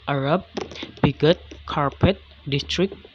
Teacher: basic pattern here is the native germanic trojan pattern that is with primary stress on the penultimate syllable